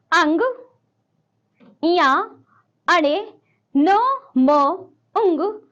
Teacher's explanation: छठा देखिए अंग, या, अणे, न, म, उंग, नासिका, इनका उच्चारण स्थान है नासिका, इसलिए इन्हें नासिक्य कहते हैं।